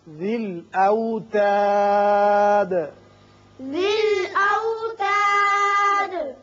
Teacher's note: یہاں جب ہم نے وقف کیا تو دال ساکن ہو گئی اور اس کی صفت قلقلہ ادا کی